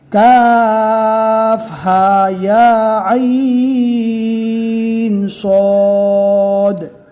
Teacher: اب آگے والی جو مثال ہے اس میں دھیان سے دیکھنا ہے کہ ہا اور یا ان دونوں کے اوپر صرف کھڑا جبر ہے، اور کھڑا جبر کا ہم نے قاعدہ پڑھ لیا ہے کہ کھڑا جبر کو صرف 1 الف کے برابر ہی کھینچ کر پڑھنا ہے، اور کاف، عین اور صاد کو کم سے کم 3 اور زیادہ سے زیادہ 4 الف کے برابر کھینچ کر پڑھنا ہے